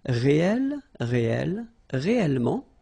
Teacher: the sound of the E changes and it's open, it's E. So that's the reason why you've got this réel, okay?